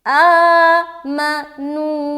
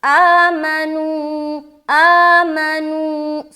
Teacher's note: آ میں کھینچ رہے، نو میں کھینچ رہے. بیچ میں جو حرف ما ہے اس کو ہم جلدی ادا کر کے چھوڑ رہے ہیں، اس کو پکڑ کے نہیں رکھنا.